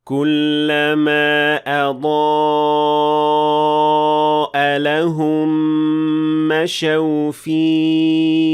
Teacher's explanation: And you do that by making sure that you're pushing enough air out so that the ha will be audible at the end of the word, especially when it has sukun at the end of the word, like in this situation.